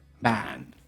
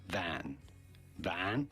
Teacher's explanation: Shorter with a more open A sound